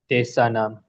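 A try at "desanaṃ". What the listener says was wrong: Yeah, so you need to say like put the nasal consonant, change the long A to short A.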